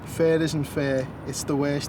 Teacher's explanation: the sound of the word nurse and the sound of the word square so you've got the uh sound and the a sound apparently they're prone to sounding the same in Liverpool